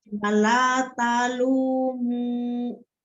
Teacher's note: Talu bisa ada hamzah sukun kalau berhenti di situ. Tapi kalau disambung talumu, lu-nya aman.